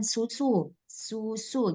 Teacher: harus tajam tajam suara desirannya